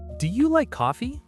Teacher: Pitch rises on coffee. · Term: yes, no question rise